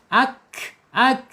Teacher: sifatnya alhams mengalir ya. mengalir mengalir napasnya. · Kaf ini menyentuh ya langit-langit yang berdaging ya.